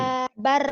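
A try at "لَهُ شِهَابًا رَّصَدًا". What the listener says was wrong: shin. Shinnya belum nyamber, shinnya. Shin gede. Lahu shihabar rasada.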